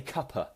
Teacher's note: that's the word cup and of, that kind of schwa noise mixed together into a cuppa